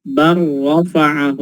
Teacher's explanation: Kita lihat di situ ada bal rafa'ahu. Ketika disambung bacanya langsung lamnya masuk ke ra, dibaca bar rafa'ahu